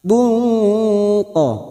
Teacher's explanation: Nasibun duma tanwin pada huruf ba yang bertemu qaf ikfa hakiki, kita samarkan bunyi tanwin dan mendengung selama 3 atau 2 harokat